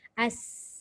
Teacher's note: Masa kita menyebut sin yang mati memang ada keluar angin kan? Angin itu keluar melalui bahagian atas. Sebab lidah kita dah parking di gigi bawah.